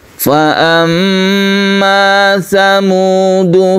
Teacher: ketika kita membaca tasdid mim ini kita tahan membacanya kita sebut dengan ghunah musyaddadah